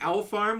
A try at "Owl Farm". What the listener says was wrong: Owl Farm. It sounded like you said All Farm. Or Our Farm. Or Owl Farm.